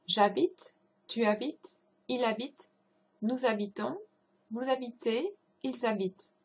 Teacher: Otherwise, the je, tu, il, and il plural all sound the same at the end, like a e. You cannot hear the s in a tu form, and you cannot hear the nt in a il plural form, because those are final consonants, so they're not pronounced.